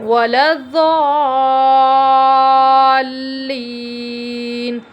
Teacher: یا مدہ کو ایک الف کے برابر ہم کھینچ کے پڑھیں گے۔ نون کے اوپر زبر ہے، زبر کو جلدی پڑھیں، تھوڑا بھی نہ کھینچیں۔